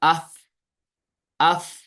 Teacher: تو اف ادا کرتے وقت فوراً بند نہیں ہوتی آواز، اف بند نہیں ہوتی بلکہ اف پھر تھوڑی تھوڑی جاری رہتی ہے. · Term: صفت حمس